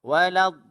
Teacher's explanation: Huruf dad ramai yang baca dengan makhraj huruf dal yang ditebalkan. Huruf dal yang ditebalkan ialah dengan menggerakkan hujung lidah pergi kepada belakang gigi atas.